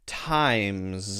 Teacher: the z sound carries the voice